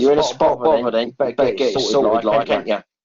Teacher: Vean cómo lo que les decía, el asunto de las glotalizaciones generan esta especie como de cortes